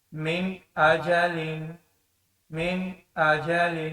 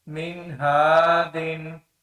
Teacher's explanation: نون یا تنوین کو واضح طور پر ادا کیا جاتا ہے بغیر کسی غننے کے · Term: اظہار